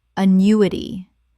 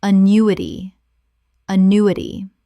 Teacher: 4 syllables with the stress on the second.